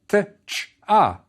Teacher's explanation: one sound it may be spelled TCH but it's one sound it's made by expelling air once through your teeth while the tip of your tongue is touching the roof of your mouth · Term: only one sound